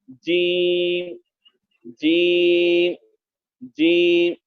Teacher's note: जीम का जो मखरज है हमारे गुज़िश्ता सबक में हो चुका है, बीच जबान तालु से मिलकर अदा होता है